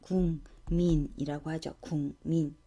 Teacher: 기억하고 미음이 만나서 이응하고 미음으로 바뀌었네요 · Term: 비음화